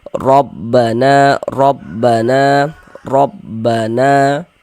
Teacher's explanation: ketika kita mengucapkannya, kita tebalkan huruf ra-nya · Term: tafkhim